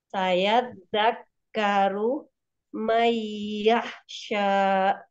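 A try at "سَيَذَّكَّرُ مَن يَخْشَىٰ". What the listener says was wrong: Jangan di ini Bun, jangan saya zakaru, jangan gitu, tapi dialirkan saya zakaru mayyahsya gitu ya.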